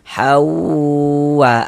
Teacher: A dibaca panjang. Ini mad badal panjang dua harakat. · Jangan dibaca han, tapi dibaca hau. Jadi di bagian haunya itu suaranya itu kita tahan. Kita gunakan sepanjang 2 harokat. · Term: idgham bi gunnah